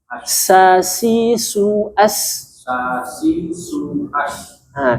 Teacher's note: Di sini bukan nash, tapi nas. Ujung lidah ketemu ujung di bawah.